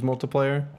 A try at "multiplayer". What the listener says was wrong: You say it like multiplier, yeah.